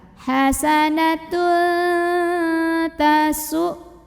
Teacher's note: Karena ada tanwin dhammah yang bertemu dengan huruf ta. Maka tanwin dhammahnya dibunyikan samar-samar menuju huruf ta disertai dengungan. Ini juga sama, samarnya besar, dengungnya dikit aja. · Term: ikhfa aqrab